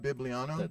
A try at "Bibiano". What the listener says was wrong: not an L. You keep putting the L in it. Bibiano.